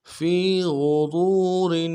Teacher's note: فی میں فا کو یا کے ساتھ ملانا ہے، یا مدہ ایک الف دال میں کھینچیں گے، غین کو موٹا ادا کرنا ہے، را کو واو کے ساتھ ملانا ہے موٹا کرتے ہوئے، واو مدہ ایک الف دال میں کھینچیں گے، را کے نیچے تنوین ہے غنہ کریں گے، وقف کی صورت میں را کو جزم سے بدلیں گے.